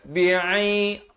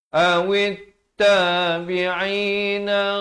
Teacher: ain di pertengahan kerongkong